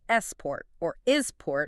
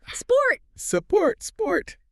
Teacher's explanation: It's the S cluster at the beginning, specifically for Spanish and Portuguese speakers and others. Your mouth wants to put a support vowel at the start. · There is no a sound before the snake.